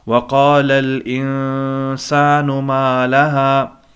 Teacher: नून साकिन है, उसके बाद सीन आया है, तो यहाँ पे इख्फ़ा होगा, नाक में आवाज़ लेके जाएंगे।